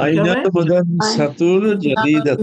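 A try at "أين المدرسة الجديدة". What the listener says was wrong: আল জাদিদাতু, আর বলার দরকার নাই, মিলাই বলে দিবেন, আইনাল মুদাররিসাতুল জাদিদাতু, কি হবে? আইনাল মুদাররিসাতুল জাদিদাতু, মাশাআল্লাহ, সবাই বলেন তো, আইনাল মুদাররিসাতুল জাদিদাতু, মাশাআল্লাহ।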